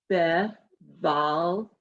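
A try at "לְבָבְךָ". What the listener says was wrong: Nope. This is a chaf. No tail. Levavecha. Right, that's your final chaf and with the a on it. So it's levavecha.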